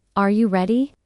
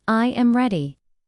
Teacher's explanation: when a native speaker asks a yes or no question, like, Are you ready? the pitch of their voice goes up at the end. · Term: intonation